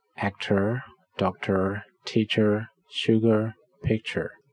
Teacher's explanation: you can hear that all of the last syllables are unstressed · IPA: ɚ